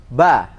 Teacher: Yang baca be salah. Harus ba. Buka ya kalau fathah.